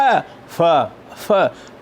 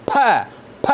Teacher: F is fricative sound. P is bilabial plosive.